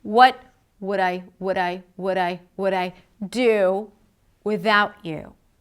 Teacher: You is a little lower in pitch. Full vowel, but lower in pitch.